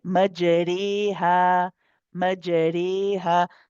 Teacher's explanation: The ra is light because it's closer to the kasra sound, so it's more towards the light ra anyway. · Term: imala